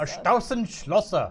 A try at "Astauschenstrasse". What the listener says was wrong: Strasse, not Schlosse.